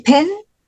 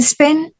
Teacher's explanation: in letter P in pen is aspirated. P in Spain is not.